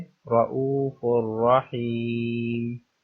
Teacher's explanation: فا پر تنوین ہے جس کو ہم را سے ملا کر پڑھیں گے لیکن یہاں پر غنہ نہیں کریں گے